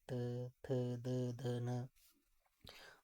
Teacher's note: दांतों से इनका उच्चारण हो रहा है, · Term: दंत्य व्यंजन